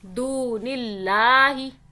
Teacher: دیکھیں دال کے آگے واو آ رہا ہے، اس لیے ہم ایک الف کے برابر کھینچ رہے ہیں، واو مدہ ہو رہی ہے.